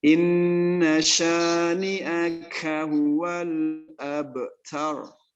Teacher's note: Huruf ta. Ujung lidah bertemu di atas ta, lemas keluar udara.